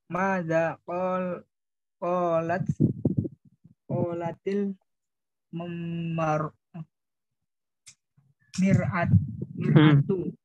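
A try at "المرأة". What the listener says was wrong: Mar. Kalau mir'ah itu artinya cermin, kalau mar'ah itu artinya wanita.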